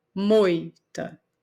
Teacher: sai com maior volume quando a gente fala moita o o então o o é a vogal e o i é semivogal por isso que ele é decrescente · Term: ditongo decrescente